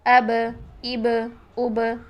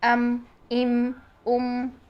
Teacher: बा को साकिन हालत में बा की आवाज को हिलाते हैं जबकि मीम साकिन को नहीं हिलाते हैं मीम की आवाज को साकिन हालत में नहीं हिलाना जबकि बा